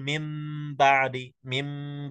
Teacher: باء ساكنه غير مقلقله مدغمه تخرج بتصادم الشفتين